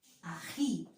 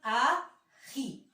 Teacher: ¿Dónde vendría a ser la mayor fuerza de voz? En la sílaba ji.